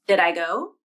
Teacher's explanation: The second D in did becomes the flap because the D is between two vowels, and the second vowel is in an unstressed syllable